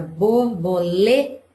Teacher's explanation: quando a gente fala a palavra borboleta, o lê é mais forte. Então, o lê é a sílaba tônica.